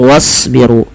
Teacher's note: Animsyu wasbiru ini juga sama jangan dibaca wa usbiru tapi langsung wasbiru dan tebalkan pada lafal huruf shad karena shad termasuk huruf istil yang pangkal lidah kita kita naikkan. Dan sad juga memiliki salah satu sifat yaitu sifat idbaq yaitu lidah itu lebih melekat-lekat dengan langit-langit atas.